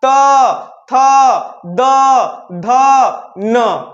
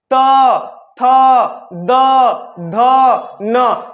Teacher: तो जब भी त थ द ध न पढ़ते हैं तो दंत से पढ़ा जाता है। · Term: दंत से उच्चारण